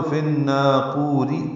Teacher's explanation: ملانا ہو تو فن ناقوری، پھر را باریک ہو جائے گی